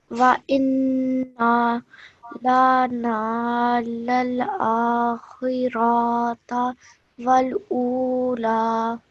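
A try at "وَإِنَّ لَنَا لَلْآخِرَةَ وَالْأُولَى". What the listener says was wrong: Okay, just be careful again. This ra shouldn't be stretched for more than 1 second because of the simple fatha. Okay, so wa inna lana lal akhirah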